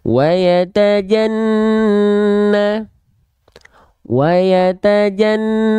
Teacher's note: huruf nun bertasydid gunnah itu harus ditahan 2 harokat. Nah, 2 harokatnya harus 2 harokat kadarnya kadar untuk hukum tajwid gunnah.